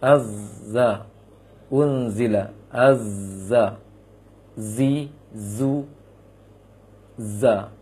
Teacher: Namun yang di sini adalah yang dituntut adalah bunyinya tersebut. Bunyi yang keluar ketika mengeluarkan huruf tersebut ada bunyi seperti siulan burung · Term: sofir